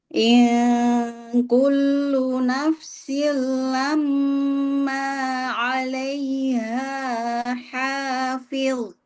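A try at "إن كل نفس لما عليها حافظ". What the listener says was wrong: Buka mulutnya, kemudian kurangi sedikit lagi. Nah, nanti PR-nya dua harokatnya dikurangi sedikit ya Bu ya. Jangan sampai kepanjang dikit. Kemudian durasi dengung ditambah.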